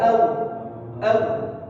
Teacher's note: pengucapan au jangan lebih cenderung ke O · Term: harful lin